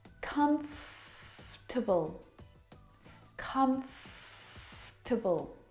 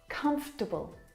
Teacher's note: this word just like vegetable has an extra vowel in there that we don't need to pronounce